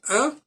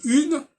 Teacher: quand je dis par exemple un, il y a une diphtongue. Si je dis une, il n'y a plus de diphtongue